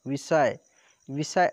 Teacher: यहाँ पे देखिए मूर्धन्य स होता है दोस्तों, मूर्धन्य स।